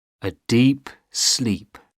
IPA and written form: ə diːp sliːp (a deep sleep)